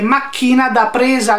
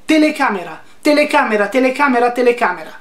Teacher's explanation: che macchina da presa non è fluido Telecamera Telecamera Telecamera Telecamera ci sono delle Liquide dentro telecamera non ci sono interruzioni macchina da presa non è continuativo Perché c'hai una una plosive